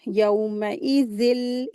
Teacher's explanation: यहाँ पर इदगाम कामिल हो रहा है, गुन्ना नहीं होगा यहाँ पे। तो यहाँ पर तनवीन में लाम की आवाज़ को मिला दिया जाता है।